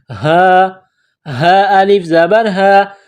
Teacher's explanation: یہ گول ہا ہے چشمے والی، منہ سے ہوا نکالنے کی طرح اس کو پڑھتے ہیں